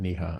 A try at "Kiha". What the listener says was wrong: Yes, it's actually Kiha. So, it's your best effort to pronounce that silent K which is not silent in my last.